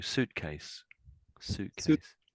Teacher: Yeah, because I think I could hear the word suit just a bit too clearly, but when you put the two words together, sort of the T dies a little bit